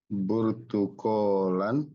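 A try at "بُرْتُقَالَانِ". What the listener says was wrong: masih kurang tepat coba dibaca nunin ya dibaca nunnya biar lebih enak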